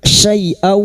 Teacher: Sekarang di sini kita wasal atau terus kita uraikan pada kalimat syai'aw fathah tanwin bertemu wawu idgham biguna masuk pada huruf wawu dan mendengung selama 3 harakat